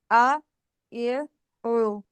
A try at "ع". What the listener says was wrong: आइन आपका सही अदा नहीं हो रहा है, इसकी आपने मशक करनी है खास तौर पे।